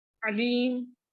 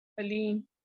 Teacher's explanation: عین کی جگہ ہم لوگ حمزہ کے آواز نکالتے ہیں جو کہ غلط ہے۔ اب قرآن میں آتا ہے علیم عین سے، علیم جاننے والا، ٹھیک ہے، جبکہ ہم لوگ کیا بول رہے ہوتے ہیں اس طرح سے علیم، ایک دم غلط مطلب ہو گیا، ایک حرف کی جگہ دوسرا حرف پڑھ دیا نا ہم نے۔